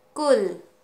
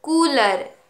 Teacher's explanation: जब हमने छोटी ऊ की मात्रा वाले शब्दों को उच्चारण किया है तब ऊ का जो समय है बहुत ही कम था और बड़ी ऊ की मात्रा वाले शब्दों के उच्चारण के समय उसका उच्चारण समय कुछ लंबा था